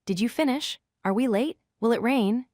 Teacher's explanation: Pay attention to how your pitch rises at the end. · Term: rising intonation